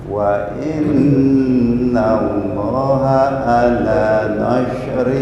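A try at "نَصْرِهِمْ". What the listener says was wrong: Nah, bukan nash. Kalau nash itu shin, ini shad. Nasrihim. Wa innallaha Allah satu alif. Wa innallaha ala.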